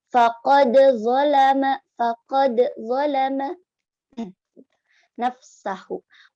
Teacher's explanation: Faqad itu qalqalah sughra. Makanya dibacanya harus ada qalqalahnya ya.